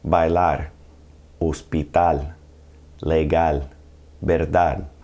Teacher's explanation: The stress in these words will be on the very last syllable.